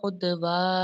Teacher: عد میں ہم نے قلقلہ کرنا ہے، دال ساکن ہے، دال کو ہم نے ہلا کے پڑھنا ہے